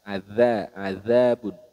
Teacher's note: jadi pelafalan dari huruf dalal yang ada titiknya seperti ini adzabun huruf dalal ini makhrajnya pada bertemunya ujung lidah dengan gigi seri bagian atas